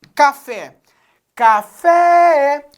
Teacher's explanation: eu tenho uma palavra com mais de uma sílaba e a sílaba tônica é a última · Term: oxítona